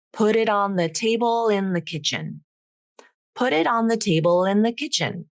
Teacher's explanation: Now that final L links over to the beginning vowel.